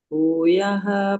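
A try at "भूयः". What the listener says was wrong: But there's one என்ன சொல்றது correction. We don't use the booyaha. We don't pull the raga. Booyaha. It's just it's a short A.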